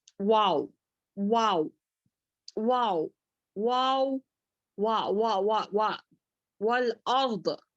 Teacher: دونوں ہونٹوں کو گول کرنے سے اور نہ ملانے سے واو ادا ہوتا ہے